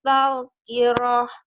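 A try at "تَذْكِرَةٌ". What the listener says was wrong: Ya, talnya belum mantap ya. Tazkirah. Tazkirah.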